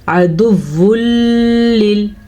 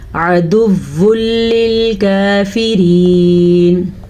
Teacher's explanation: یہاں پہ بالکل بھی جائز نہیں ہے رکنا، کسی قسم کا غنہ بھی نہیں بنتا یہاں پہ کیونکہ اس کا نام ہی ادغام بلا غنہ ہے.